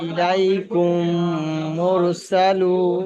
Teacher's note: প্রথম মিমকে দ্বিতীয় মিমের সঙ্গে মিলিয়ে গুন্না সহ পড়তে হবে। >> মিন সেকেন্ডের পরে যদি মিম আসে তাহলে প্রথম মিমটাকে দ্বিতীয় মিমের দ্বারা গুন্না করে পড়তে হবে। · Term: ইদগামে সাফাবি